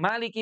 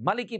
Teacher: dibaca panjang maliki pada surat Al-Fatihah dan maliki pendek itu pada surat An-Nas